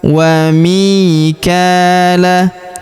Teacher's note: Huruf mi kita panjangkan 2 harokat karena ya sukun di depannya. Wa mikala. Huruf ka kita panjangkan 2 harokat karena di atasnya terdapat tanda alif kecil ya.